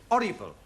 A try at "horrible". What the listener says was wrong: You keep dropping your aspirates. An aspirate is the sound made by the letter H. The words you've given me all start with H and not with an O.